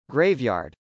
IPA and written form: grˈeɪvjˌɑrd (graveyard)